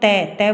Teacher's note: त बोलोगे तो देखो तुम्हारी जीव है वो दंत है उनको छू होएगी या स्पर्श करेगी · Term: दंत व्यंजन